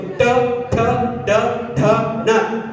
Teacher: ಬಾಯಿ ಒಳಗಿನ ಅಂಗಳವನ್ನು ಬಳಸಿ ಹೇಳುವುದು ಟ ಠ ಡ ಠ ನ ಒಟ್ಟಿಗಿದೆ